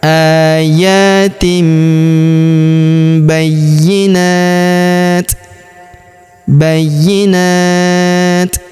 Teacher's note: tanwin in kita sukunkan. Maka dia kita baca dengan hembusan.